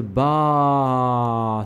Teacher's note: Now, let's put ba with the long vowel elif. Alif makes an ah sound. So you're going to combine the ba with the long vowel alif. It makes a ba sound.